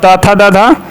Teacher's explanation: त थ द ध दंत होते हैं